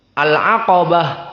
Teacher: maka ain di sini muraqqaqah dan qaf di sini mufakhamah. Dan mufakhamahnya di sini qaf berbeda dengan ra.